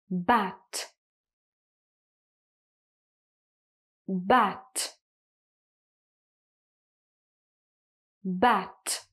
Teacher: It's a voiceless sound. You're not going to use your voice, no vibration in the throat. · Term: final T sound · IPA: /t/